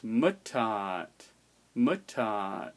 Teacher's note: So the pitch should be higher on the barred I than on the other vowel. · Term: stress